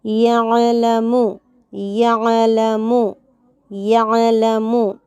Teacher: یعلم میں عین کو جھٹکا دینے سے بچانا ہے، عین کو حلق کے درمیانی حصے سے پڑھنا ہے، قلقلہ ہونے سے بچانا ہے۔